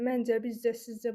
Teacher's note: Bunların hər birində vurğu qəbul etmir